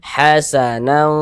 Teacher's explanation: Maka cara membacanya disamarkan dan juga didengungkan. Kadar samar dan kadar dengungnya pun dia seimbang. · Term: ikhfa hakiki awsat